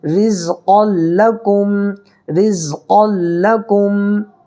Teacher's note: لام اور را کی صورت میں ادغام بلا گنہ کر کے پڑھیں گے، یہاں پر گنہ نہیں کرنا ہے